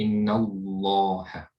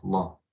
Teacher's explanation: The lam is heavy here when you say it, law. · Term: heavy lam